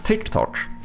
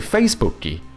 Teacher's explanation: I mean, Brazilians even go as far as to add new letters because Brazilians don't say tick tock, they say ticky and they don't say Facebook, they say Facebooky